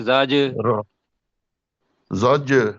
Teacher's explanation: جیم کے ساتھ زور دے کے پڑھنا ہے، جیم کے ساتھ کلکلا کرنا ہے